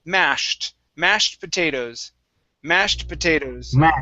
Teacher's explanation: this e d at the end is going to make a t sound and the a in this word instead of being ma it's